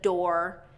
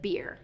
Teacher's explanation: And what I'm hearing instead of the American R, which is kind of smooth and strong, is I'm hearing either a rolled R or a relaxed R, okay? So rolled or relaxed, which usually happens with R vowels at the end of words